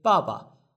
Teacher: The first one is the fourth tone, the second one is neutral.